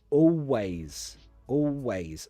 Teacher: Almost always I change the dark L to a W.